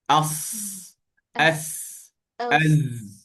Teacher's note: Kalau yang ini, kalau yang ini gigi kacip atas, kalau yang ini gigi kacip bawah. So hujung lidah kita menyentuh pangkal gigi kacip bawah. Tempat tumbuhnya gigi di yang di bawah gigi kat gigi bawah ni sini.